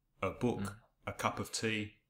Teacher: Not of, but of. So it's always a weak sound then, the schwa. It's never a strong sound. Yeah, it's a sound without effort.